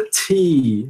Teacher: Veja que tem aspiração, né? Do som T.